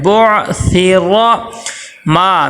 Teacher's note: میم کے ساتھ الف مدہ آ گیا، میم کو ایک الف کے برابر لمبا کریں گے